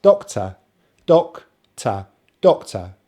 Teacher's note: So you notice the stress on the first syllable